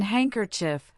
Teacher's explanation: in handkerchief, the D silently disappears